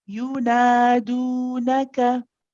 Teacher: We start off with a short 1 count to you, and then nadu, same length for both light letters